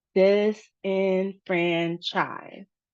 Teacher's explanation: So disenfranchise has 4 syllables, and we can see there's multiple points of emphasis, particularly on the franchise part, and there's a low emphasis on the beginning and the last syllables